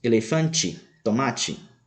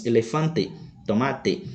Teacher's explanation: a letra e no final das palavras não sofre alterações de tom como ocorre no português · Exemplos, no português pronunciamos elefante, tomate. Em espanhol pronunciamos elefante, tomate, preservando o som do E fechado no final da palavra. Veja que por mais que a palavra tenha a mesma escrita, a pronúncia irá mudar.